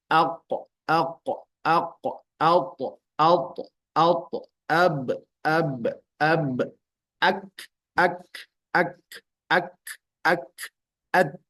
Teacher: ini adalah suara yang tertahan nama sifatnya adalah syiddah lawannya adalah rakhaah maka rakhawah itu adalah suara yang tidak tertahan